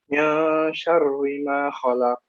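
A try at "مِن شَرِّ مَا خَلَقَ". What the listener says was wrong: Cenderung masih tebal ya. Syarri. Coba ro. Patah. Ri. Oke, min syarri. Min syarri ma khalaq.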